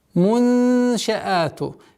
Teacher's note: Ихфа, мягкая ихфа в размере двух огласовок назализации.